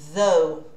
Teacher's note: Esse aqui é o primeiro TH que a gente viu, que parece o Z, só que é entre os dentes.